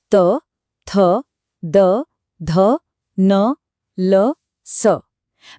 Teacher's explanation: दंत्य मतलब दांतों से। इन ध्वनियों को बनाने के लिए हमारी जीभ की नोक ऊपर वाले दांतों को अंदर की तरफ से हल्का सा छूती है। यह बहुत ही सटीक और नाजुक हरकत है। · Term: दंत्य वर्ण